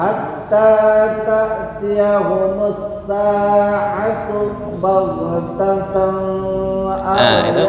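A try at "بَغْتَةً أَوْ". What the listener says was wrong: Itu nggak boleh dengung. Baghtatan au ya. Nggak boleh dengung.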